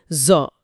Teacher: زو کی ادائیگی زا جیسی ہے، لیکن زبان کی جڑ اٹھا کر اسے بھاری کیا جاتا ہے